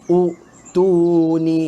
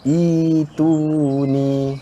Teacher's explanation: Ibdal. Tukarkan hamzah kepada bacaan ya mad sebanyak 2 harakat.